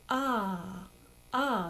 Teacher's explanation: this vowel is a more open vowel and it's ah ah so it's important that we have a